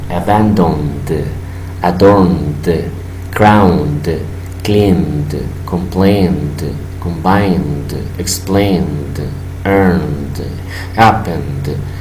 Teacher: Ejemplo, puedes notar que hay vibración, por lo tanto cuando los pasamos en pasado simple, el ED va a sonar como una D